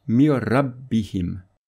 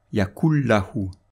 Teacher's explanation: Le nun avec soukoun va disparaître et la lettre lam ou ra va être renforcée par un shadda. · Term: l'assimilation sans nasillement